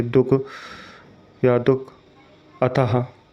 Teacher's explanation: बोलते समय इसका उच्चारण कंठ से निकलने वाले हा, आधे हा के समान होता है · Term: विसर्ग